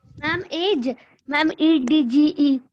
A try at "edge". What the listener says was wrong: Yes, very good. Age, EDGE.